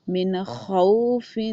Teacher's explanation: من غل، من خوف، اب نون ساکن کے بعد خا ہے، یہ آواز رگڑ کھاتی ہوئی آنی چاہیے آپ کی